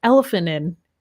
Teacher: we link those words together sounds like one word